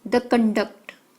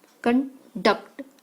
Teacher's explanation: Con is the noun meaning a standard of behavior, while the conduct, stress on a duct, conduct, emphasize on the second syllable, is the verb